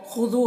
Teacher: خا کو پر پڑھنا ہے، یہ حروف مستعلیہ میں سے ہے